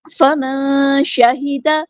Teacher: نون ساکن کی آواز کو یہاں پہ چھپا دیں گے، اخفا ہو رہا ہے، باریک اخفا، ہاں سمپل ادا کریں گے، دال کے زبر کو لمبا نہیں کریں گے۔